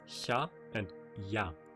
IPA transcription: ça and ja